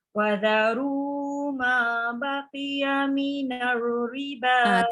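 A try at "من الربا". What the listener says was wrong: Tak ada getaran. Minar. Itulah namanya takrir. Tapi riba tu 4 atau 5 harakat. Paling kurang 4. Panjang tu.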